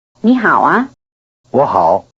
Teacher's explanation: A low tone changes into a rising tone before another low tone.